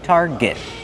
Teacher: Use the R sound like car and far, tar, plus the hard g sound.